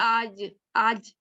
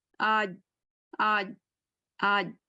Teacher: آج کے بعد دیکھیں آواز آپ کو ایکسٹرا فیل ہو, آج آج, فیل ہوئی کسی کو آج. جیسے جب زبان سختی کے ساتھ تعلق کے ساتھ جب لگے گی تب جیم کی آواز, اگر سختی سے نہیں لگے گی تو چے کی آواز آئے گی. ابھی سختی سے ہم نہیں لگاتے نا اردو اسٹائل میں, نا ہم کہتے ہیں آج آج, یہ ساؤنڈ ایڈ ہو گئی, تو یہ نہیں ہونی چاہیے, اس لیے کہ ہم نے سختی سے نہیں لگایا. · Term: عربک اسٹائل